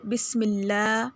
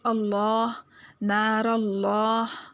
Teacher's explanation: لفظ اللہ کے لام سے پہلے زیر ہو تو لام باریک ہوگا، جیسے بسم اللہ، اور اگر لام سے پہلے زبر یا پیش ہو تو لام موٹا ہوگا، جیسے اللہ، نار اللہ۔